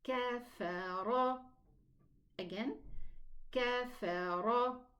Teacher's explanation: Imam Hafs elevates the ra fatha and the ra dhamma